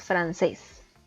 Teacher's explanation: francés. Es una palabra de 2 sílabas, la sílaba tónica recae en la última y como sí termina en S, debemos acentuarla, francés.